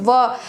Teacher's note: जब हम उसको उच्चारण करते हैं तो व, हम दांत को अपने ओठ से मिलाते हैं तब ये ध्वनि का उच्चारण होता है। दोनों में से कोई एक भी नहीं रहेगा तो ध्वनि का उच्चारण मुश्किल हो जाएगा, शायद हास्यास्पद हुई भी हो जाए। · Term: दंत्योष्ठ